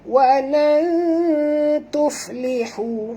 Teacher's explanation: Nun mati bertemu ta, kena sorokkan bunyi nun ke dalam ta, disertai dengan dengung, dua harakat ikhfa hakiki ya.